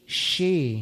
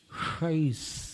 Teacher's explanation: शे में जीभ को नीचे वाले दांतों से नीचे ले जाना है, और शै में ऊपर वाले दांतों के पीछे ले जाना है, शे शै। और फिर स पर वो जीभ ला करके रोकना है तोम के पहले, रशे शैस।